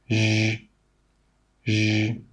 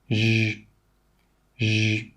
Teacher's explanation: This is a voiced sound, which means when you make this sound, your throat must vibrate. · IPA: ʒ